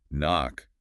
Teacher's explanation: With knock, that K used to be pronounced, but over time we stopped saying it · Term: silent letters